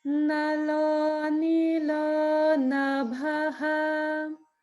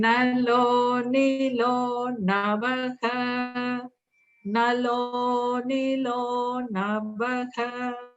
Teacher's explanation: This one I find very tricky because first it's like nalo and then nilo. And also the nalo is all on one note and then ni goes up and then down